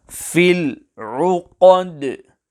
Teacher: The qaf must be pronounced clearly and not changed into a kaf, and the qalqalah on the letter dal must also be pronounced clearly without changing the sound of the letter dal as per the English letter D.